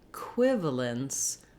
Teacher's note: this first letter e is going to be unstressed and short it's going to be the e sound it actually has the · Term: reduced sound